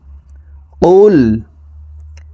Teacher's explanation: এই কফ হরফের উচ্চারণ জিহ্বার গোড়া তার বরাবর উপরের তালুর সঙ্গে লাগাইয়া উচ্চারণ করে পড়তে হবে। কফ লাম পেশ কুল, এই কফ জজমলা লামকে ধরবে।